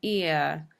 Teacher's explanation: you can hear that there's a slide between one sound and the other